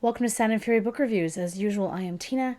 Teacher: My voice is a bit breathy today because, as usual, I have a cold